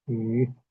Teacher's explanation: Y tengan en cuenta que es un tono ascendente